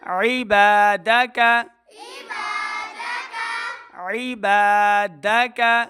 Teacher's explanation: عین کو تلفظ کے ساتھ پڑھیں، ای حمزہ کی آواز نہیں بلکہ عین زیر عی